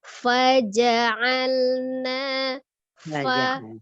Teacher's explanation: ada udara mengalir fa-nya ya